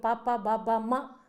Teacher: ಅದು ಸಂಪೂರ್ಣವಾಗಿ ಮೇಲ್ದುಟಿ ಮತ್ತು ಕೆಳದುಟಿಯ ಉಚ್ಚಾರ ಅಂತ ನಮಗೆ ಕಾಣಿಸ್ತ್ತದೆ